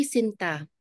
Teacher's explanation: the stress is on the second syllable almost like a serenade